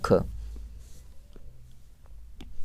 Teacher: ख ही जो है ये स्पर्श व्यंजन, कंठ ध्वनि और अघोष और महाप्राण ये सभी के सभी ख है